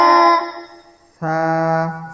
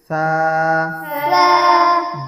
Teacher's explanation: জিভ বাহির হবে, জিভ বাহির করে দিতে হবে, হালকা দাঁতের আগা লাগবে